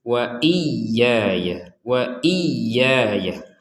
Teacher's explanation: ya yang pertama ini harus ditekan karena ada tasydidnya, harus lebih dan berbeda dengan ya yang kedua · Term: tasdidnya